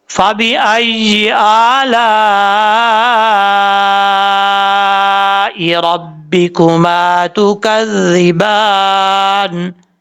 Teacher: ایسا نہیں پڑھنا, دونوں کو لانگ کرنا ہے, لیکن حمزہ کو تھوڑا لانگ کرنا ہے. لام کے اوپر جو مد متصل, اس کو 3 الف کے برابر آپ نے لمبا کرنا ہے